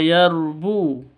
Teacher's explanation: yarbu rnya R tafhim tebal Bu panjang dua ketukan karena ada wau mati diawali dengan Dom